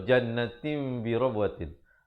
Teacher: Bunyi nun kepada bunyi mim yang nipis. Mulutnya dibiarkan sedikit ada ruang itu. Birabwatin, jangan kita tutup rapat tim. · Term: iqlab